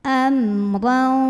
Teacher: Ro-nya dibunyikan secara tafkhim karena ro-nya berbaris fathah, tanwin barisnya di atas. Jadi ini bacanya tebal.